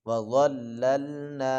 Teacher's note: ضاد کو موٹا کر کے پڑھیں گے، اس کے اوپر زا کی آواز نہیں آنی چاہیے